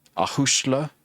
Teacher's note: there's a slender a slender vowel and so the S becomes a sh sound